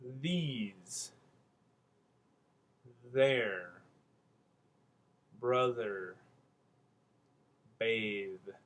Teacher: we'll have slightly rounded lips, we'll have tongue protruding slightly between the teeth, and a little bit of space between the teeth and the tongue to let the air through and the sound through. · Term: voiced TH